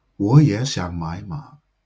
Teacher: So instead, all of the third tones apart from the last one are pronounced as second tone